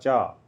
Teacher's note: च वर्ग तालव्य में आता है